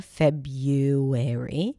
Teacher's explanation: the American pronunciation, which is without the original R